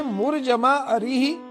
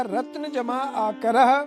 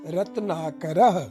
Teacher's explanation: इधर ह्रस्व अ है और आकर में पहला आ दीर्घ स्वर है। दोनों ह्रस्व और दीर्घ स्वर मिलकर के एक दीर्घ स्वर बन गया तो रूप बना रत्नाकर। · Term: दीर्घ संधि